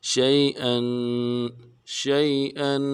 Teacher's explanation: یا لین ہے بغیر کھینچے پڑیں گے، حمزہ کے اوپر تنوین ہے، غنہ کریں گے ، شیئا، شیئا، اذا اراد شيئا ان يقول، ان يقول،